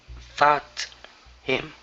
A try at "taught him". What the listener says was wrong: this is going to be taught okay instead of thought there there isn't an H here so it's taught